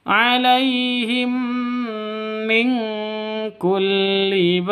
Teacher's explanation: mim mati bertemu dengan mim jadi bacanya masuk ke mim disertai dengung dua ketukan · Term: idgham